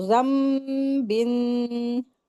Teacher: यहाँ पर इक़लाब का रूल हो रहा है, नून साकिन के बाद बा आया है तो नून की आवाज को मीम में बदलते हुए गुन्ना करके पढ़ेंगे